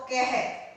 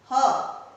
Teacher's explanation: जो पीछे की विसर्ग है उसकी जो साउंड है ह की आएगी